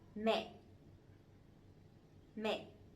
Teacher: But this one has the dot, the dấu nặng, the strong tone. So it has to be down and it has to be stronger a little bit